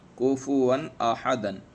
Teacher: کفواً، کفواً احدن، کفواً احدن، 2 زبر کی تنوین کے بعد میں حمزہ ہے، اس لیے اظہار حلقی ہوگا، یعنی بغیر غنہ کے صاف صاف پڑھیں گے، تنوین کو ظاہر کر کے پڑھیں گے